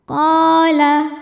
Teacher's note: Maka cara bacanya qaf dipanjangkan 2 harokat. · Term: mad tabi'i dhahiri